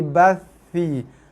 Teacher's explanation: Huruf tha ujung lidah. Ujung lidah sentuh gigi atas.